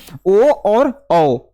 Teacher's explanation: कंठ और ओष्ठ से जिसका उच्चारण होता है उसे कंठस्थ वर्ण कहते हैं।